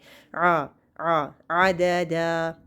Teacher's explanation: आइन से दरमियान हल्क को थोड़ा सा आपने प्रेस करना है, ज़बान की बैक को अंदर की तरफ लेके आना है।